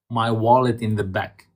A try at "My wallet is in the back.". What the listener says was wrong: Is in the back. So here we want to make sure that is pronounced. My wallet. Put it together. My wallet is in. So we're gonna put them together. We're gonna put small clusters, like tie these and tie these. My wallet is in the back. Da-dum, da-dum, da-dum.